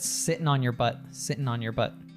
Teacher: when we have these words ending in ing, we'll drop the G